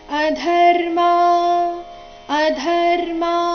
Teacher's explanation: ಅಲ್ಲಿ ಧ ಮಹಾಪ್ರಾಣ ರಸ್ವ ಬರಬೇಕು